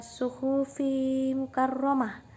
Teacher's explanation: Idgham biguna di sini terjadi sebab ada tanwin bertemu dengan huruf mim, yaitu mim bertemu mim. Ketika dibaca huruf mimnya didengungkan, dan adapun huruf ro dibaca tafkhim sebab berharokat fathah.